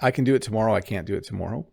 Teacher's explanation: So if I say, I can do that tomorrow, or I can't do that tomorrow, I kind of overemphasize the can't.